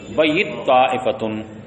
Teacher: ایک قرأت تو یہ ہے کہ بیتا کی تا طا میں مدغم ہے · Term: ادغام